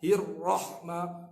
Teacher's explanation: Huruf ra, huruf tikrar, dia ada bergetar. Hirrahma, jaga getaran tu bukan sampai 4, 5, 6 kali.